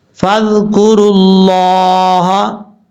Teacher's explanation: لفظ اللہ اس لیے پر پڑھا جا رہا ہے کیونکہ لفظ اللہ سے پہلے پیش ہے. آپ کو میں نے بتایا تھا لفظ اللہ سے پہلے زبر ہو یا پیش ہو تو لفظ اللہ پر پڑھا جاتا ہے, اس لیے یہاں پر لفظ اللہ کو موٹا کریں گے.